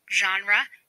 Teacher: The zh is a voice fricative consonant sound. There are no unique spellings in English orthography for this sound.